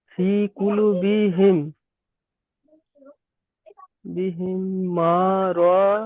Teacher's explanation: মিম সাকিনের পরে মিম আসলে মিমকে মিম এর সাথে মিলিয়ে এক আলিফ পরিমাণ গুন্নাহ করে পড়তে হয়। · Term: ইদগামে সাফাবি